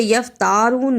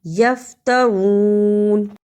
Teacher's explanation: تا کو لمبا نہیں کرنا، زبر زیر پیش کو لمبا نہیں کرتے